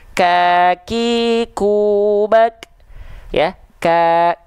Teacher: huruf Kaf Dia Hanya berupa percikan nafas saja karena dia disandingkan dengan sifat suara yang dia syiddah tertahan tuh · Jadilah percikan nafas. Nah, maka ketika kaf dilafalkan dia hanya percikan